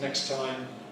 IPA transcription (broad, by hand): ˌneks ˈtaɪm